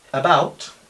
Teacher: Después tendríamos una A muy corta, también se llama schwa este sonido.